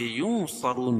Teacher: نون ساکن کے بعد حروف اخفاء کے 15 حرفوں میں سے صاد ہے، یا ناک میں آواز کو چھپا کر پڑھیں گے ، رون واو مدہ ہے اور را کے اوپر پیش ہے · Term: اخفاء حقیقی